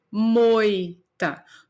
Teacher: no mesmo momento que eu abro a minha boca para falar essa sílaba eu não separo essas duas vogais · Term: de tongo